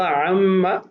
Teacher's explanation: عما یتساءلون، عن ما، اب یہاں پر نون ساکن اور اگلے کلمہ کی ابتدا میں میم ہے جو حروف یرملون میں سے ہے، نون کو میم کی جنس میں تبدیل کر کے 2 کا آپس میں ادغام اور غنہ کیا جائے گا